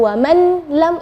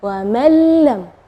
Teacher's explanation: Ya, di situ kita bacanya wa mallam ya, jadi huruf nunnya tidak ada, atau kita dibilang idgham ke huruf berikutnya dan gunnahnya tidak ada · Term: idgham bila gunnah